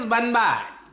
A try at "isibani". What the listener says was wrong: You're putting too much emphasis on the B. You're putting too much emphasis on the B.